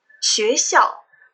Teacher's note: you can see a very beautiful dip and rise in the first syllable and a straight fall in the second syllable.